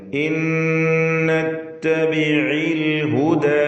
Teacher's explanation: ഇൻ എന്നതിലെ സാക്കിനത്തായ നൂൻ ശേഷമുള്ള നൂനിൽ ലയിപ്പിച്ച് മണിക്കണം. ഇത് ബിഗുന്ന കാമിൽ.